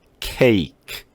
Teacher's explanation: 앞에 A자가 있다 해가지고 이게 애자 소리를 내면 안 돼요. 이거는 애도 아니고 애 소리도 아니에요. 이 애보다는 조금 아주 조금 좁힌 소리예요.